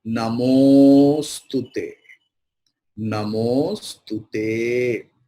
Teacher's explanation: O is getting stress and Tu is small